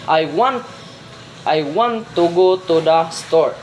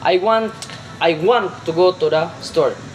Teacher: I want and store was much louder and much longer and also much higher in pitch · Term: sentence stress